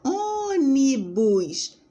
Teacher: Ônibus, a gente divide em 3, ó. Ônibus é proparoxítona, antepenúltima, que é a mais forte.